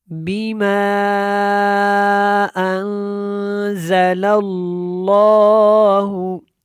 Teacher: بیما کے اوپر مد منفصل ہے، جس کو ادا کرتے ہوئے ہم اس کو کھینچ کے جو ہے پڑھتے ہیں